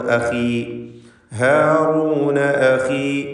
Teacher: ഖാഇന് കുറഞ്ഞ തഫ്ഖീം മതി, കസ്റ ആയതുകൊണ്ട്